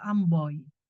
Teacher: perubahan vokal belakang Madya o atau o ke vokal depan tinggi I maka oi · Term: diftong, diftongnya adalah OI